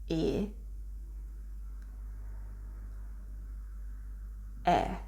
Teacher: this e sound in italian is called an open e sound